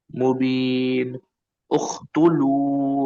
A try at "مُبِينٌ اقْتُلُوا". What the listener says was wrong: اق قاف ہے بابا۔